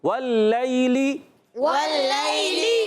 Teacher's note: واللیلی میں واؤ کو لام سے ملانا ہے، واؤ میں اونٹ گول ہو جائیں گے، واؤ پر زبر ہے، لام پر زبر ہے، لام یا زبر لئی، یا ساکن سے پہلے زبر، یا لین ہوگا، نرمی سے ادا کریں گے، لام مشدد بھی ہے، ذرا رک کر بھی ادا کرنا ہے، اور آخر والی لام کے نیچے زیر ہے، حرکت کو کھینچیں گے نہیں۔